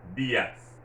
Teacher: since the accent is over the I, you have to stress that I, dias. If, for example, the word was D-I-A-S, accent over the A, it would have been dias.